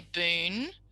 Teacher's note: they're leaving off the weak syllable or the syllable that is usually a schwa